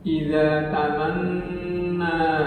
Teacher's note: Di ayat 52 ini dua huruf gunnah, yakni nun yang bertasdid dan mim yang bertasdid ada, yakni kata idza tamanna di samping panjang juga berdengung